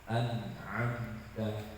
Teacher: huruf nun dan mim itu punya gunnah, yang mana gunnahnya harus 1 harokat. Dan dia juga punya tawasud ya.